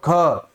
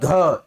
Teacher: आपके पेट से, आपके अमाशय से थोड़ी सी ज्यादा हवा आपके बाहर आते हुए प्रतीत होगी।